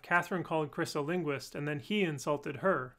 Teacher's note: with focus on the pronouns, and insulted actually de-accented